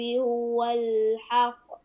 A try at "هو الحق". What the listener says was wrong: لا، قلق القاف، القاف هنا قلنا أنها قلقلة كبرى، قلقلة كبرى شديدة وأشد قلقلة كبرى، فتقف على هو الحق فتسمع